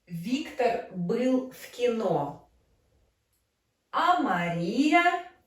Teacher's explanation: first we decrease our tone and then we increase in the end of the sentence. decrease and then we increase, rise our tone. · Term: fourth intonation construction